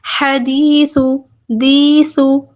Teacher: یہاں پہ کیا ہے؟ یا مدہ ہو رہا ہے. اس کو بھی ہم 2 حرکات لمبا کریں گے.